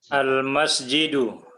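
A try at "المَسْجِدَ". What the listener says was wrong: Difathahkan akhirnya.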